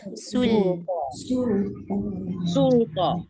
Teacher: Dekat lam tu jangan moncong. Sin tu je yang moncong.